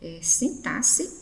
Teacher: O X aqui nesse vocábulo tem som de S e não de KS